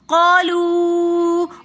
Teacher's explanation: قالو کے اندر مد منفصل ہو رہی ہے، تو اس لیے ہم قالو اس کو 3 فنگرز کی مقدار کھینچ کر پڑھیں گے